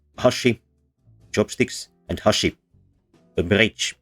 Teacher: the differentiation between these is in which syllable has a higher pitch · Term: pitch accent